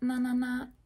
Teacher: Ta, ta, ta, na, na, na. Your tongue is in the exact same place, but with the N, the air is switched to come out the nose instead of the mouth. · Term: N sound